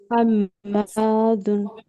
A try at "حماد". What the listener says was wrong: হা উচ্চারণটা হচ্ছে না, হা উচ্চারণটা পারফেক্ট করবেন, বাতাস বের হবে, হ্যাঁ এরকম ভাবে উচ্চারণ করবেন।